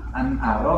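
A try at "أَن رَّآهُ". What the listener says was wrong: Arro. Nunnya hilang karena nun sukun bertemu roh, hukumnya idgham bigun, biguna apa bila guna?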